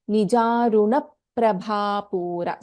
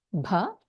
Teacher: So in nijaruna prabha, bha is a mahaprana, bha.